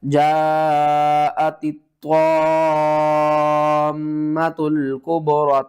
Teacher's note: طوا کو کھینچنا ہے اور کھینچ کے میم کے ساتھ ملا کر پڑھنا ہے